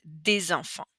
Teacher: Okay, so here we have that N sound. Here, des, the S is normally silent, but here we're going to pronounce it as a little Z sound.